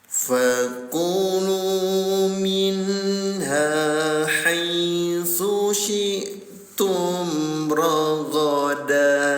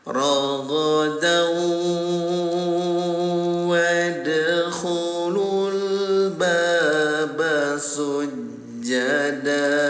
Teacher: Asalnya rogodan jadi rogodau ya, ditempelkan ke huruf waw. Jadi bunyi tanwinnya ditempelkan ke huruf waw, didengungkan selama 2 rakaat. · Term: idgham bigunah